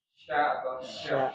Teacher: Tengah lidah ya, tengah lidah menyentuh langit-langit. Tapi sentuhannya itu tidak seperti huruf temannya ya. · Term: huruf shin